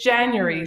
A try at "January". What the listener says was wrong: That's not how we say it here in the States. We had a couple more syllables. Especially if you're from the South.